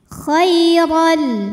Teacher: huruf ro dibunyikan secara tafkhim karena berbaris fathah tanwin maka dibacanya tebal pangkal lidah dinaikkan · Huruf ra dibunyikan secara tafkhim karena berbaris fathah tanwin, maka dibacanya tebal, pangkal lidah dinaikkan. Khairan. Kemudian ada hukum idgham bila gunnah karena ada tanwin fathah menghadapi huruf lam, maka tanwinnya lebur ke lam, khairan, tanpa didengungkan.